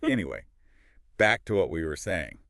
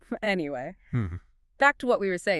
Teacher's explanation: You need to use a calm, slightly falling intonation.